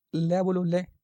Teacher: ये लय होता है, मतलब निश्वास से समय जीवा के बगल से निकलने वाली ध्वनि को लय बोलो, लय। जीवा के दोनों साइड से हवा आ रही है, लय बोल के देखो आप, पार्श्व व्यंजन इसे कह देते हैं। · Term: पार्श्विक व्यंजन